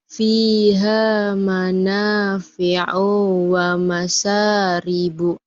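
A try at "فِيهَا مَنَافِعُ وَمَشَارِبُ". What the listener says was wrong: O-nya pendek. Fiha manafi'u wa. Fi'wa. Fi'wa. Fiha manafi'u wa masyaribu.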